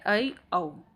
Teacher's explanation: तीसरा है हमारा अर्धविवृत, यानी कि हाफ ओपन। जिन स्वरों के उच्चारण में मुख द्वार आधा खुलता है